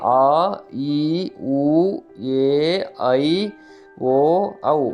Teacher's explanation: ಆ ಈ ಊ ಏ ಐ ಓ ಔ ಒಟ್ಟಾರೆಯಾಗಿ ಏಳು ದೀರ್ಘ ಸ್ವರಗಳಿವೆ. ಇವು ಎರಡು ಮಾತ್ರಾಕಾಲದಲ್ಲಿ ಉಚ್ಚರಿಸುವ ಅಕ್ಷರಗಳು.